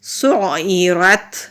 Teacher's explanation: سین پیش عین سو عین زیر ای سعی را زبر تارت سعیرت۔ عین حلق سے نکالیں گے، سین سیٹی والے حروف میں سے ہے، ہلکی سی سیٹی کی آواز آتی ہے۔ را کو موٹا پڑھیں گے، تا ساکن ہے، تا جب ساکن ہوتا ہے یہاں ہم ہمس کرتے ہیں۔